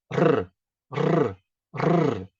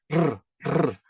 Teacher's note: a ponta da língua, ela irá lá acima, não é nos dentes de cima, é atrás, naquelas rugosidades que nós temos aqui acima no palato duro